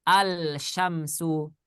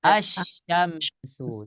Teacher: karena syinnya adalah huruf matahari ya sebagai huruf-huruf Syamsiah maka lamnya tidak dibaca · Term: Idgham Syamsiah